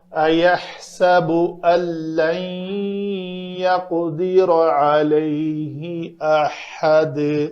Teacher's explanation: تو نون ساکن کے بعد حروف یرملون میں سے اگر لام آ جائے تو اس نون کا ادغام کامل ہوتا ہے۔ اس لام میں نون پڑھنے میں بالکل باقی نہیں رہتا، تو اس کو کہتے ہیں ادغام کامل بلا غنہ۔ بلا غنہ سے مراد یہ ہے کہ یہ غنہ کے بغیر ہوگا۔